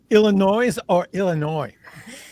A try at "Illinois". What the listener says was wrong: Illinois. The S is silent, but a lot of people outside of the Midwest, do say Illinois.